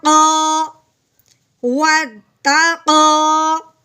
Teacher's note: آگے قاف اوپر کھڑی زبر ہے جس کو ہم نے ایک الف کے برابر لمبا کرنا ہے